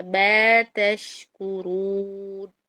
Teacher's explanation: یہاں پر میم پر کامل غنہ کرنا ہے، ما نہیں بولنا ہے